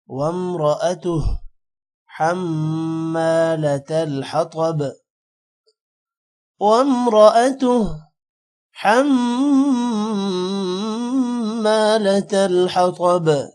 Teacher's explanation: وامرأتہ را موٹا ہوگا، وامرأتہ حم میم پر غنہ ہوگا، حمالۃ الحطب، تو موٹا ہوگا اور با پر قلقلہ ہوگا